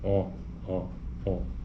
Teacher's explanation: Então, por exemplo, vamos pegar a vogal aqui que ele dá um exemplo de O. Ele está dizendo que a posição da língua é posterior, portanto é mais profundo da boca.